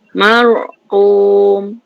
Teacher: Mulut tu kembung. Lidah terangkat. Pangkal lidah terangkat. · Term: Ra tu tebal